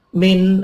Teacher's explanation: ada nun mati ketemu hamzah dibaca idhar halaqi